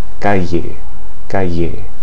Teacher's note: The most common pronunciation of double L is a sound similar to the Y in the English word yo-yo, although usually with slightly more friction